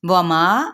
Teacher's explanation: واو متحرک ہے، وما واو ہونٹوں کی نا تمام گلائی کے ساتھ پڑھیں گے